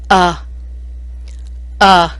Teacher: a a i a i a next step down is the short vowel sound for the letter U where the chin drops a little more more and the mouth opens more uh uh i e a